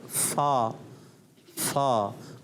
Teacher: ऊपर के दांतों के किनारे और नीचे वाले होंठ के तर हिस्से से अदा होता है